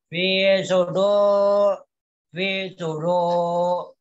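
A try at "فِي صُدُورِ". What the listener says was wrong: Masih belum jelas ya kamu itu ya. Mulai tadi min fi sudur itu masih belum nampak. Roknya itu masih belum nampak.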